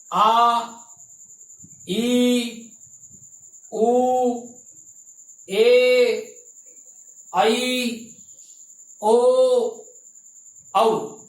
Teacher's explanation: इनके उच्चारण में 2 गुना समय लगता है, अतः इनकी मात्रा 2 मानी जाती है। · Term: दीर्घ स्वर